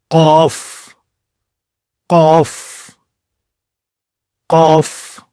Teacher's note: اس کے بعد اگلا حرف ہے قاف، یعنی گلے کے پچھلے حصے سے مضبوط آواز